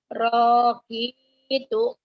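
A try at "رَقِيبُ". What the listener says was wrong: Rok, yang panjangnya Q-nya ya, Bu ya.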